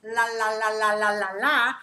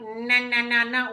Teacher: I'm letting the air go out of the side.